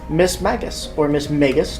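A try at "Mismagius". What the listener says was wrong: I think it's Miss Magius. I think there's an I after the G.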